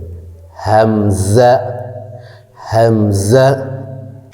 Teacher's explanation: হামজা হারফটি কণ্ঠনালীর শুরু হতে উচ্চারিত হয়